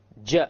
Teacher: You notice that the entire middle portion of the tongue is being used. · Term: jim